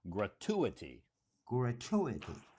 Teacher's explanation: actually the emphasis is on the second syllable.